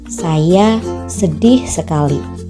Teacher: dalam tataran kalimat ucapan panjang pada silaba terakhir bermaksud mencari perhatian